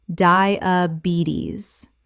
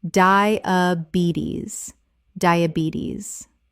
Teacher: The stress is on the third syllable, and the final S makes a Z sound.